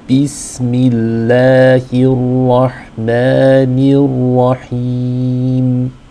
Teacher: there's a kasra under the ba, so we want the e sound